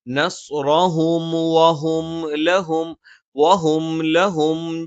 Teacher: സുക്കൂനുള്ള മീമിന് ശേഷം വാ വന്നാൽ മീമിനെ പൂർത്തിയായി ഉച്ചരിച്ചതിന് ശേഷം മാത്രം വാ ഉച്ചരിക്കുക, അല്ലെങ്കിൽ അവിടെ മീം എന്നുള്ള ഉച്ചാരണം പൂർത്തിയാകാതെ നിൽക്കും.